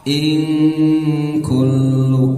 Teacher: rumus ikhfa itu ketika disamarkan suara dan ditahan itu siap-siap lidah kita di posisi huruf yang akan disebutkan, yaitu huruf kaf ya. Kaf itu di pangkal lidah bagian bawah, siap-siap di situ.